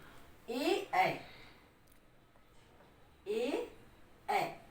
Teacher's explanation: चलिए, ए दैतो कंठ तालु, ए ए, इनका उच्चारण स्थान कंठ तालु होता है, क्योंकि जब हम ए बोलते हैं तो जिह्वा तालु से भी स्पर्श कर रही है और कंठ से भी घर्षण हो रहा है, इसलिए इसका उच्चारण स्थान कंठ तालु।